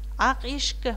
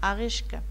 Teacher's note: Соңғы сөздің басы дауысты дыбыстан басталып тұрғандықтан бірінші сөздің соңындағы қ дыбысы ға айналады, ұяңданады. Ақ ешкі. Мұнда дауыстылар дауыстың қатысы жағынан дауыссыздарды игеріп тұр.